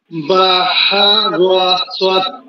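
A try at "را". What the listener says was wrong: রোয়া হবে না ভাই, রোয়া না, রোয়া না, রোয়া এটা হবে না, র র র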